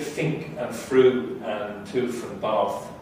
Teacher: Those are so-called labiodental fricatives. That means they're made between the lower lip and the upper teeth, so the lips and the teeth are involved rather than the tongue tip and the teeth.